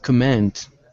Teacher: that last word is pronounced command with the stress at the very end.